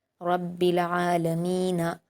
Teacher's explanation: عین پر کھڑا زبر ہے، 2 حرکات کھینچ کر پڑھیں گے۔ · لام پر حرکت ہے، جلد پڑھیں گے۔ میم پر یا مدہ ہے، 2 حرکات کھینچ کر پڑھیں گے۔ نون پر حرکت ہے، جلد پڑھیں گے۔